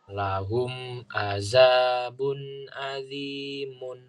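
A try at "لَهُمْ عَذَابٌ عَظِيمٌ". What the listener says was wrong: Ain. Lahum azabun azimun.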